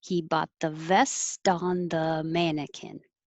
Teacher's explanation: the t and the th are close so i'm getting ready for the th